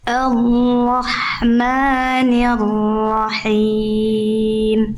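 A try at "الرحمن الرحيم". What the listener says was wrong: Sip, yang ini agak ni-nya tadi, jangan nir. Ni. Ar-Rahmanir-Rahim.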